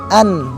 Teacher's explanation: pada saat kita mengucapkan huruf nun an kita akan mendapatkan bahwasanya huruf nun tersebut berada di hujung lidah kita dan berada di atas gigi atau di gusi bagian atas